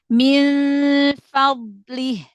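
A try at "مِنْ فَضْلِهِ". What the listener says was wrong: Jangan dinaikkan ke atas, jangan min fa karena fa huruf tipis dari makhraj huruf fa-nya. Min fadlih.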